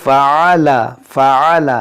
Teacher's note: یہاں دیکھیں فعل فعل، یہاں پر عین ہے، اس کو بعض لوگ پڑھتے ہیں فعل، حمزہ پڑھتے ہیں عین کو حمزہ نہیں پڑھنا ہے، عین کو عین ہی پڑھنا ہے